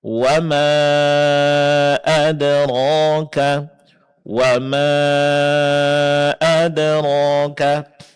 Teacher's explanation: mad yang dipanjangkan sedang itu empat harakat. Di sini hanya ada satu contoh, yaitu bertemunya huruf mad dengan hamzah dalam kata yang terpisah. · mat yang dipanjangkan sedang itu 4 harakat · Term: mad jaiz munfasil